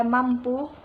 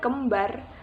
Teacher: Bunyi M, P, dan B sama-sama bunyi bilabial